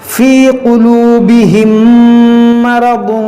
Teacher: میم ساکن کے بعد میم ہے، یہاں پر ہم ادغام شفوی کریں گے یعنی غنہ کریں گے